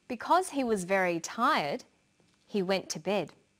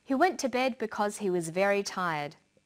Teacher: Because he was very tired, he went to bed. Notice the pause. He went to bed because he was very tired. There's no pause.